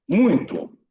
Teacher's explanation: Então, o U vai ser a vogal. E o I vai ser a semivogal.